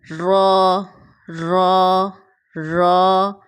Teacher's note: ہماری زبان کی نوک اوپر کی طرف ہلکا سا فولڈ ہو کر ثنایا علیہ کی جڑ اور تالو کو ٹچ کرتی ہے